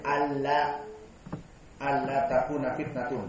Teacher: Hamzahnya ada, nunnya juga ada, namun melebur dengan lam · Di idgham maknanya dimasukkan haraf pertama, hilang, jadi haraf yang kedua. Maka an bertemu dengan la, mudgham disatukan jadi alla.